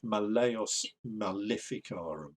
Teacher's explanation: a long second vowel and i i would say that it's that long second vowel is where the stress ought to be